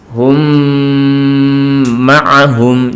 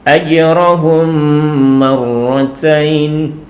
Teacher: Jadi mimnya sukun masuk pada mim berikutnya disertai dengan berdengung. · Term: idgham mimi